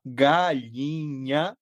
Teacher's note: nenhum de nós percebe que não fala esse nh porque para nós esse nh vira uma vogal. E isso faz parte do dialeto do sotaque.